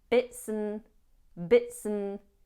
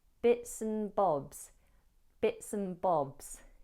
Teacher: we use the weak version of and we drop the D, leaving us with bits and, bits and. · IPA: /bɪtsən bɒbz/